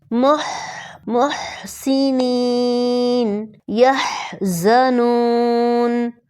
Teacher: حا کی آواز حلق سے رگڑ کھا کر نکلتی ہے